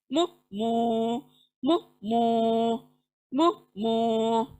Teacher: मीम, दोनों होठों के मिलने से मीम अदा होगा